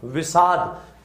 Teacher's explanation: अब इसका समझिए, जैसे ई या उ के बाद में स या थ आ जाए तो क्या हो जाता है, तो यहां पर समझिए मैंने लिखा विदन सम, प्रारंभ में क्या रही है ई, बाद में कौन सा से आ रहा है, दंत्य से, मिला के लिखेंगे तो क्या बनेगा, दंत्य से का मूर्धन्य से हो जाएगा